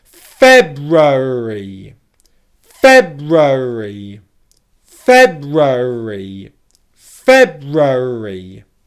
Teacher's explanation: Pay attention to the stress on the first syllable and the fact that all the syllables that come afterwards are unstressed. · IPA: /ˈfeb.ru.ər.i/